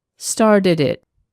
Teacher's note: So, if a word ends in a consonant sound, started, and the next word begins with a vowel sound, it, we move the consonant sound in front of the vowel sound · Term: linking